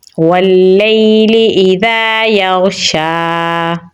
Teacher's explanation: شین پہ کھڑی زبر ہے تو اسے ہم لمبا پڑھیں گے تو پڑھا جائے گا واللیل اذا یغشا۔